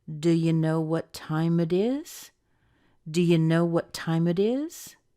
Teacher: see if you can connect the two T's together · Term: the rise at the end